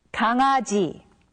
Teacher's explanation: when the characters iung and iung meet back to back, then they are pronounced separately